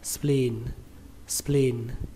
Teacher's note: Từ này các bạn lưu ý là ở đây nó ghi hai âm E, vì vậy mình sẽ đọc là mình kéo âm E, âm I này ra là thành âm I dài các bạn nhé